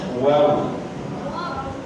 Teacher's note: اوپر والے دانت نیچے ہونٹ کے ساتھ لگاتے ہیں، واو پڑھتے ہیں۔